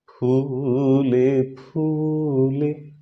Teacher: স্পৃষ্ট ব্যঞ্জন হওয়ার কারণে আমাদের দুটি ঠোঁট একসঙ্গে শক্ত করে এঁটে দিতে হবে